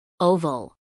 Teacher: acentuación en la primera sílaba